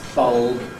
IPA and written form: bʌlb (bulb)